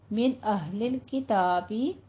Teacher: یہاں پہ نون کو لمبا نہیں کرنا کیونکہ اظہار حلقی ہے